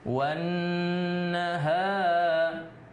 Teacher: ada nun bertasdid, maka disebut dengan gunnah. Gunnah itu didengungkan.